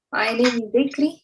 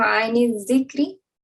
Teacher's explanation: you would be completely ignoring this lam, the sound of lam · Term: idgham